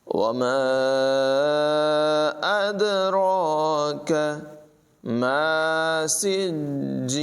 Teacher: اد دال جو ہے اس میں قلقلہ ہوگا، خوب ظاہر کر کے پڑھیں گے · را کی آواز پر ہے، کاف کو باریک پڑھیں گے